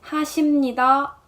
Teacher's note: letter ㅂ sounds more like an ㅁ in this case